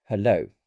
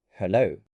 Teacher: Let's also consider intonation. If you say hello with a flat tone, it sounds cold.